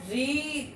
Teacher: ऋ शब्द जो है वो महाप्राण है और सघोष है।